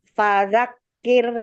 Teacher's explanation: Jadi rnya ini e Cukup dua harakat saja ya